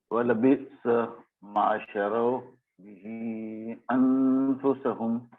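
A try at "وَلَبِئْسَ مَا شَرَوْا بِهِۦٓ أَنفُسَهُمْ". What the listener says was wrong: Bihi, there's a mud there. بئس ما شروا به أنفسهم.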